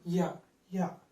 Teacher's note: తాలువు దగ్గరకు నాలుక రావడం చేత, అంటే నాలుక మధ్య భాగం రావడం చేత యా అనబడే శబ్దం వస్తుంది. యా యా అని పలికేటప్పుడు ఈ యొక్క నాలుక ఈ భాగం తాలూకు దగ్గరకు వెళ్తుంది అనమాట.